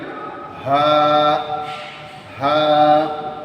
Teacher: কন্ঠনালীর শুরু থেকে হামলার মত কন্ঠনালীর শুরু থেকে বলতে হবে